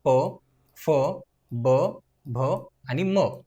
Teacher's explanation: ओटांचा वापर करून ज्या वर्णांचा उच्चार होतो त्यांना आपण औष वर्ण अस म्हणतो ज्यामध्ये प फ ब भ